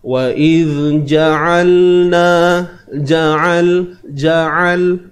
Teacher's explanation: huruf Ain kita kena sempitkan pada bahagian kerongkong kita